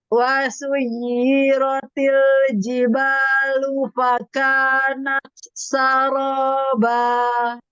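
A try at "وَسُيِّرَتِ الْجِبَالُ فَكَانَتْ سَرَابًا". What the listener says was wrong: Wasuyiratil jibalu fakanat saroba. Intonasinya mau turun. Wasuyiratil jibalu fakanat saroba. Saroba. Ketika mau mengakhiri bacaan, intonasinya mau turun.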